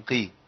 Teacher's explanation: هي القاف مكسوره فاخد ادنى مراتب التفخيم